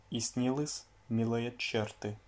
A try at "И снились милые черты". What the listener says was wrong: И снились милые черты. Alors, à снились, pense bien à mouiller le S à la fin. Toi tu dis снились, alors qu'il faut dire снились. Hein, il y a un signe mou, donc il faut bien que la dernière consonne soit molle.